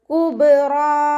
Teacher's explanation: റോ ഫതഹ ആയതുകൊണ്ട് നമ്മൾ ഉയർത്തിയിട്ട് രണ്ട് കൗണ്ട് നീട്ടി നിർത്തി കൊടുക്കുക